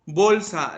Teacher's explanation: Bolsa, la sílaba tónica es bol.